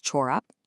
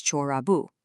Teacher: For his sock, it becomes çorabı. The pe softens to a b.